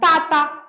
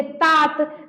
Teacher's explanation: तो मेरा त बोलते हैं तो जीभ पहली बार किधर गया? दोनों दांत के बीच में यानी दंत का उच्चारण हुआ है।